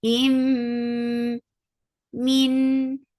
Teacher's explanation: Idgham shafawi. So, and the most important part of idgham shafawi is ghunna. So you're keeping the sound in your nose for a longer time.